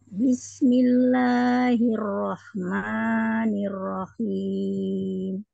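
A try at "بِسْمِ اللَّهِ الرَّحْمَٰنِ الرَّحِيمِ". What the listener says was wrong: Oke, emaknya terlalu panjang. Bismillahirrahmanirrahim.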